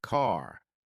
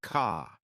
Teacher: American accent often uses a strong R sound.